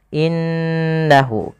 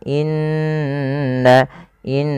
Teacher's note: padfal innahu di sini suara nunnya harus kita tahan innahu karena Nun berharakat tasydid kita hukumi dengan bacaan ghunah yaitu apa ghunah yaitu memasukkan suara ke rongga hidung dan ditahan